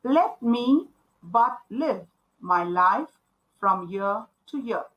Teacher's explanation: a line with ten syllables accented on every second beat · there are 10 syllables and every second syllable is stressed. So this is what means by iambic pentameter.